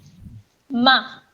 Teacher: ماں، میم الف اور نون غنہ ماں، یہ اردو والا لفظ ماں نہیں ہے. اس کو آواز کو ناک میں مت لے کے جائیے، آپ اس کو صاف آواز سے پڑھیں